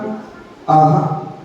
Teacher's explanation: तो पिछले हिस्से से लगाकर बोला जाए तो सा सड़क होता है, और अंत में विसर्ग का उच्चारण, जो दो बिंदियां होती ना अक्षर के बाद, तो उसको विसर्ग कहते हैं। तो विसर्ग का उच्चारण हलंत हा की तरह होता है